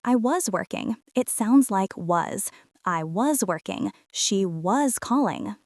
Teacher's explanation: In the past continuous, the verb to be, was or were, is usually unstressed. We swallow it a little bit.